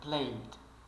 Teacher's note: ele mal pronuncia o d final mas esse D final existe de verdade existe realmente